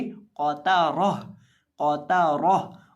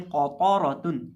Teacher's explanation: वक़फ़ की सूरत में हम इसको पढ़ेंगे क़ाता रॉह, और क़ाफ़ को और रॉ को मोटा करके पढ़ेंगे और ता को बारीक करके पढ़ेंगे